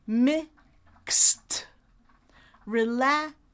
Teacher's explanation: that E is gonna be silent, and that letter D is gonna be unvoiced to a T. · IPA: /kst/